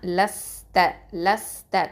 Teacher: காற்று வெளியில் வரணும், ஹம்ஸ் பண்ணணும்